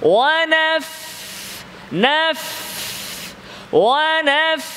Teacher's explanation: ফায়ের মাখরাজ কোথায় মিন বাতিনিশ শাফা ঠোঁটের গোপন অংশ ভেতরের অংশ ভেজা অংশ উপরের দাঁতে